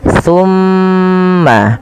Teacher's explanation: Kemudian pada lafal thumma aqrartum wa antum tashhadun, pada lafal thumma tahan dulu huruf mimnya karena di sini mim berharakat tasydid, maka tahan suara nya 2 harokat